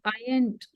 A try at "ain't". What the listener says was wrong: Yeah, it's not I ain't dear. आएगा ain't आएगा. Ain't. T को sound मत करना. Ain't.